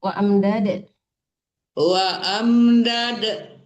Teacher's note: wa amdad dipantulkan dalnya ya